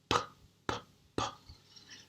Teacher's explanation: Se eu colocar a mão aqui, o som e faço P de pig, P, P, P, minhas cordas vocais não vão vibrar. Então, é um som surdo.